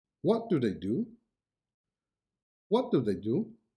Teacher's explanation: the first do is an auxiliary verb so it is pronounced in its weak form while the second is a main verb so in its strong form